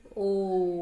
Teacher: ओ बोलने में बहुत ज्यादा समय लगता है, तो ये होता है प्लुत स्वर